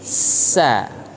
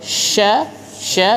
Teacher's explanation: hati-hati di tengah lidah bukan di di ujung bukan di ujung Kalau yang di ujung itu sa huruf s yang biasa kita ee tahu ya kalau sya sya di tengah lidah